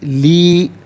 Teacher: چونکہ یا مدہ ہے، ایک الف کی مقدار کھینچ کر پڑھا جائے گا